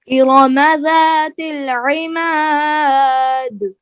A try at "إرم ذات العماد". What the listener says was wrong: ہاں عین کو کلیئر کرنا ہے، صاف کرنا ہے. إرم ذات العماد.